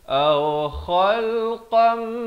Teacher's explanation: Kha pula makrajnya di hujung kerongkong. Aw khalqam, dua harakat.